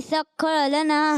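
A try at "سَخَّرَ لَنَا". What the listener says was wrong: सख्खर लना। खा नहीं होता अरबी में, खा कोई वर्ड खा होता है, क्या होता है? खा।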